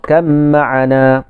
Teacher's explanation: Dia tak jadi irkab ma'ana. Dia jadi irkam ma'ana. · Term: idgham mutajanisain